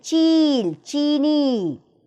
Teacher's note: ई इसमें खिंचा दिया जाता है क्योंकि बड़ी की मात्रा है